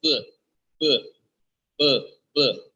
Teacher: it's a voiced sound you can feel if you put your hands on your Adam apple you can feel the vibration by producing this sound B okay